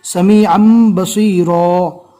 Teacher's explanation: یہاں پر اقلاب ہوگا. تنوین کے بعد اقلاب کا ایک حروف با آ گیا لہٰذا تنوین کو میم سے بدل کر پڑھیں گے.